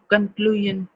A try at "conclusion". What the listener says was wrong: Yeah.